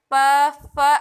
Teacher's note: ये आपके दोनों ओठों को एक दूसरे से स्पर्श करती है, इसलिए ये ओष्ठ व्यंजन के अंतर्गत आती है। · ओष्ठ व्यंजनों के उच्चारण में दोनों ओठ एक दूसरे को स्पर्श करते हैं, जिसमें जिह्वा निष्क्रिय रहती है। जैसे प वर्ग, प वर्ग में जीवा का कोई काम नहीं होता, वो साइलेंट होता है।